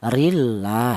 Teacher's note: lafal Allah ini didahului huruf yang berharakat kasrah ini dibaca tarkik atau dibaca tipis. Cara bacanya rillah seperti itu.